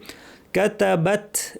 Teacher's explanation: তা এর পরে একটু বাতাস থাকবে